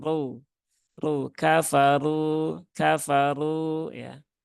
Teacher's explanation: Kalau ro yang pangkal lidahnya naik, nah itu lebih berat ya. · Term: ro tebal